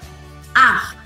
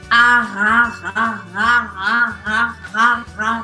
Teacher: fala só ar, mas em francês, com aquele R arranhado